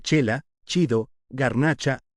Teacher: y la combinación del fonema consonántico alveolar lateral sonoro con el diptongo con la vocal alta anterior no es intervocálico, entonces no se produce el fonema velar fricativo sordo, sino el palatal africado sordo, es decir, el de la che